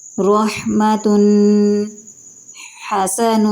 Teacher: حا ایک نرم اور ہلکی ہوادار آواز ہے، بغیر کسی گلے کی سختی کے